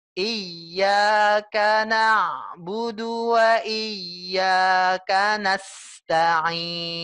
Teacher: Kalau iyyaka, i-nya kita panjangin, iyyaka. Tapi ada tasdid, Bu. Jadi ya-nya itu kita harus tekan dulu. Iya, tapi jangan berlebihan menekannya ya.